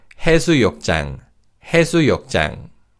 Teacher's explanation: the 지읒 in 장 is pronounced as a tense consonant